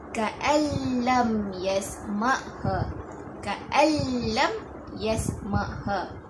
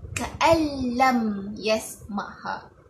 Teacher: Nun mati bertemu dengan huruf lam, lam tersebut tertarik dalam huruf nun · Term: idgham bila gunnah